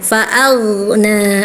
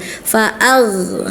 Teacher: Kemudian juga hati-hati kakak ketika ee membaca huruf gho yang sukun jangan diputus ya, jangan di jangan disyidah, jangan disaktah ya. Huruf g punya sifat rakhaah artinya ngalir ya. Ketika sukun suaranya ngalir ya.